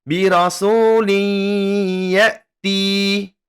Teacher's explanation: tanwin bertemu dengan huruf ya maka kita dengungkan dan ditahan selama dua harokat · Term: Idgham Bighunnah